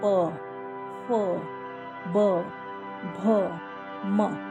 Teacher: तो अब आप देखिए, ओष्ठ यूज हो रहा है। दोनों होंठ मिलते हैं, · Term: प वर्ग